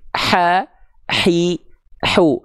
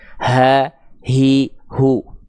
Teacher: Kalau H kecil itu dilafalkan dari bagian tengah tenggorokan kita karakter nafasnya berbisik